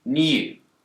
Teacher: In the word new, Brits will tend to pronounce a y sound here, new. But Americans don't. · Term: yod